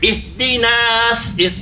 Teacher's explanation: because it's going into a saw, it's going to sound heavy